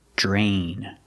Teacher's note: we see DR together, it makes the j sound, like jump and juice